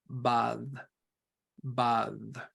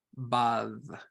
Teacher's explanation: so we start with a plosive and go to a fricative